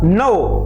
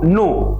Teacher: औ का उच्चारण ओ के रूप में किया जाता है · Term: औ का ओ